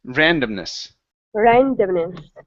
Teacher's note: there you go okay uh this word here is pronounced Randomness the stress is at the very beginning